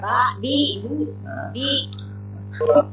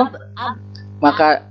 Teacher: huruf ba bisa keluar, suara ba bisa keluar itu kalau bibir atas dan bibir bawah dirapatkan